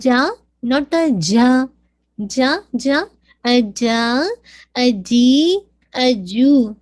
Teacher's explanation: میں اپنے ہاتھ سامنے رکھوں تو مجھے نہیں فیل ہو رہا کہ ایئر باہر آ رہی ہے